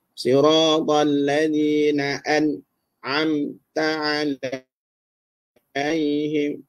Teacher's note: sebutan nun ni dia tak lari daripada bunyi dengung. Cuma dengungnya tak sempurna sikit sangat. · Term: sifat gunnah